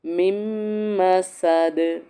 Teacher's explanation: اب دیکھو یہ حبل من مسد، اب اس کو من مسد نہیں پڑھیں گے، میم کو میم میں ادغام کریں گے، اور درمیان والا نون جو ہے وہ سکپ ہو جائے گا